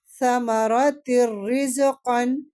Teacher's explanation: ادغام بلا غنہ ہو رہا ہے کیونکہ تنوین کے بعد کیا آ رہا ہے، لام اور را آئیں گے تو ادغام بلا غنہ